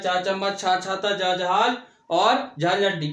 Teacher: तालव्य चा वर्ग का होता है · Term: तालव्य व्यंजन